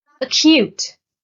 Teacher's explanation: The stress is on the second syllable,